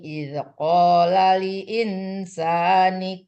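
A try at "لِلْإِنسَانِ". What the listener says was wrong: Lil insa tadi lam mati enggak terbaca. Ada dua lam. Ya, alamat lamnya mati.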